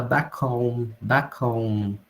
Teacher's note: Então ele fala back home, back home. Ele não pronuncia o H, back home.